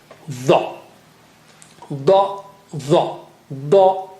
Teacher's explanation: dha with the tongue tip touching there near the edge of the upper teeth